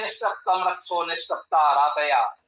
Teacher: ये ध्यान दीजिएगा, ये ता के स्थान पर टा आ रहा है, उसमें शा जो है ये मूर्धन्य है। मूर्धन्य शा के प्रभाव से ये ता का भी मूर्धन्य उच्चारण टा हो जा रहा है।